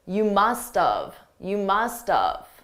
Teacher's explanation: I could also reduce it to more of an of sound, which is very commonly done by native speakers.